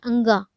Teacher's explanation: ये रहा आपका ये एक नासिक्य, मतलब कि नाक से जो होता है अंगा। अंगा जब बोलेंगे तो गला से भी निकलता है, लेकिन साथ में वो अंगा नाक से ये हो रहा है।